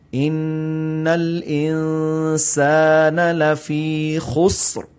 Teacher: خسر را کی بھی ساؤنڈ آئے، سین کی بھی آئے، لیکن یہاں پر قلقلہ نہ ہو